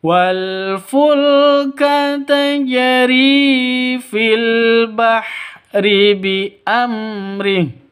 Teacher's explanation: H-nya berubah menjadi sukun karena waqaf.